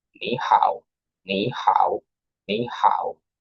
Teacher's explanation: the third tone mark. So sound falling and rising